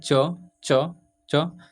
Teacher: तो आपका जो जीभ है सीधे जाकर तालु से टच कर रहा है। ठीक है, तो इसका उच्चारण तालु से होता है।